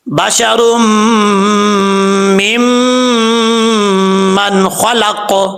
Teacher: را کے اوپر 2 پیش ہیں، ادغام ہو رہا ہے. را کو میم سے ملائیں گے، پھر میم کو میم سے ملائیں گے